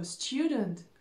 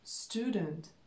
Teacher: Очень часто в американском английском этот звук «е» перед звуком «у» пропадает.